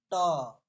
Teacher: ट में मूर्धन्य होता है